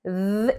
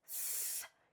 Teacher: There's th, que es la que vibra, ¿verdad? And then there's th, que es la que saca el aire.